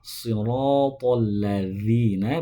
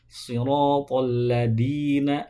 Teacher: Kalau zal itu tempat keluaran dari ujung lidah bertemu dengan ujung gigi seri atas, sedangkan dal itu dari ujung lidah bertemu dengan pangkal gigi seri atas. Ini ujung lidah kita, ini ujung gigi seri atas.